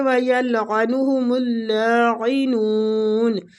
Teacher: عین وسط الحلق سے